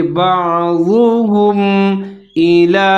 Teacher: بعضهم الى حمزہ کے نیچے زیر ہے، لام کے اوپر کھڑا زبر ہے، ایک الف کے برابر لمبا کر کے پڑھیں گے۔